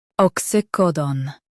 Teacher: Stress co and keep done clear.